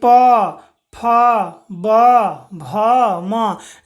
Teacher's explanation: आप प को बोलिए, देखिएगा आपका दोनों जो होठ है ना बच्चों वो आपस में टच हो जाएगा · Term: ओष्ठीय वर्ण